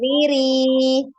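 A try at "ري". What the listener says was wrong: Nah, ini ketebalan jadi.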